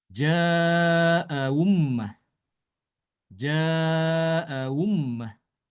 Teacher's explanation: mentasilkan hamzah yang kedua antara hamzah dengan huruf wawu sukun